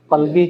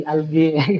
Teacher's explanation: kalau di Mesir kan kof jadi hamzah ya, qalbi jadi albi gitu.